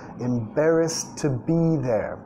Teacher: Reduciendo el to a un sonido schwa. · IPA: /t/